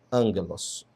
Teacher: A aspiração branda não é pronunciada.